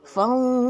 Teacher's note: adalah qalqalah kubra ya. Jadi dipantulkan.